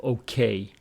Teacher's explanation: My flight was okay, with the stress on the second syllable, okay.